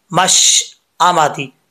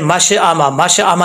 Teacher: आवाज़ जो है वो शीन पे जम जाए, लौटनी नहीं चाहिए।